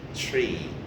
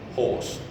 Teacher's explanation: The maximum spreading is with long E. Tree, horse, that's not spreading, horse, that's rounding.